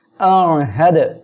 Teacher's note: হ্যাঁ দাল জবর হাদ, দাল কলকলার অক্ষর সাকিন অবস্থায় আছে, ধাক্কা দিয়ে পড়তে হবে।